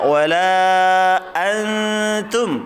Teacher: Nun sukun bertemu tak, suaranya ditahan, kemudian persiapan mengucapkan huruf ta. Ujung lidahnya disentuhkan pangkal gigi seri atas. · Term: dengungnya